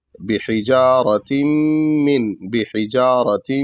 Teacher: तनवीन मीम में मिल रही है तो इस वजह से और मीम मुशद्द भी है तो इस वजह से यहां गुना होगा